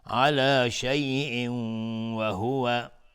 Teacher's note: تنوین بعدش واو ادغام با غنه.